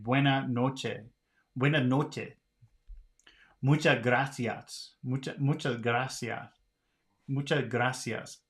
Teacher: they don't really pronounce the S. They're putting an H in here